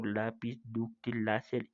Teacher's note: palabras graves o llanas en las que el acento prosódico va en la penúltima sílaba